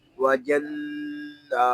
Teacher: واو زبر وا، جیم نون زبر جن، وجن، نون کھڑا زبر نا، وجنہ، یہاں نون میں شدد ہے، اس میں غنہ ہوگا۔ اور اس کو ایک الف تک کھینچ کر بھی پڑھیں گے کیونکہ یہاں کھڑا زبر ہے.